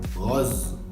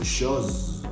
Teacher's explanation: La S se pronuncia un poquito más vibrada que la del español.